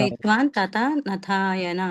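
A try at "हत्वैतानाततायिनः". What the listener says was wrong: హత్వైతాన్ ఆతతాయిన. అక్కడ నా అని ఉంది కదా, అక్కడ ఆపాలి. హత్వైతాన్ ఆ నా హత్వైతాన్ ఆతతాయిన.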